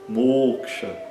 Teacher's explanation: Então, o fechado longo, né? E o a curto no final.